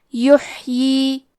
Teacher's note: آخری میں یا کے نیچے کھڑی زیر ہے، یہاں حکم ہے مد صلہ صغرا تو ہم اپنی آواز 2 مد کے برابر لمبی کریں گے